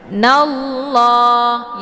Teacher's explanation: nunnya langsung dimasukkan ke dalam huruf la dan untuk alif lamnya tidak lagi dibaca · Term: alif lam asy-syamsiyah